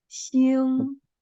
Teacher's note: the first tone is the highest tone and flat